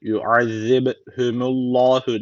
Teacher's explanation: B harfi kalkale harflerinden birisi cezim aldığı için burada kalkale tecvidi var ne yapıyoruz hafif bir vurguluyoruz